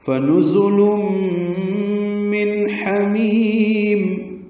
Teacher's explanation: پڑھیں گے، نون زا کو معروف طریقے سے ادا کریں گے، زا کو تیز صفیر کی آواز سے ادا کریں گے ، لام باریک پڑھیں گے، تنوین کے بعد میم آنے کی